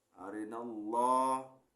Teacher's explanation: lafaz Allahnya tafkhim ya lafaz Allahnya tafkhim tebal arinallah ingat ya nyebut Allah itu bibir dan dagu enggak bergerak